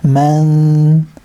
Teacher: It's going to be ikhfa on the noon. I know it's not highlighted here, but just a bit of a stretch on the noon.